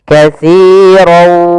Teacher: masukkan tanwin kepada huruf waw, maka dia langsung berbunyi waw. Katsirau, ya, tapi dia menyisihkan ada sedikit. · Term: idgham bi gunnah